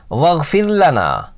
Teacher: واغفر لنا میں را باریک ہوگی، ساکن ہے اور اس سے پہلے زیر